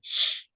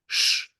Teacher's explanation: at the front of your mouth sh with the tongue pulled upwards